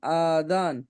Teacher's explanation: আলিফের ডান দিকে জাবার এসেছে, আলিফ মাদ্দা হবে। আলিফ মাদ্দাকে এক আলিফ পরিমাণ টান দিয়ে পড়তে হবে